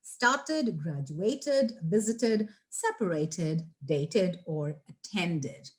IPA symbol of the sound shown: id